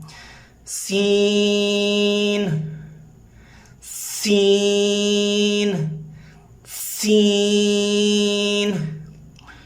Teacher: لہٰذا سین کی ادائیگی اگر 4 الف کے برابر آپ کر رہے ہیں تو یہ دیکھیں اتنا اتنا اتنا اتنا، یہ 4 الف کے برابر آپ نے ٹائم پیریڈ رکھ دیا۔ تو چلے زبان کی نوک کو اوپر ثنایا علیہ کے درمیان میں رکھتے ہیں اور دانتوں کو جوڑتے ہیں اور ادا کرنے کی کوشش کرتے ہیں۔ سیٹی کی آواز اس میں آنی چاہیے۔